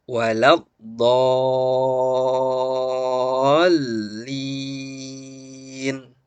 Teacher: Maka terjadilah mad lazim mutsaqqal kalimi. Panjangkan dulu 6 harokat baru dimasukkan kepada huruf lam.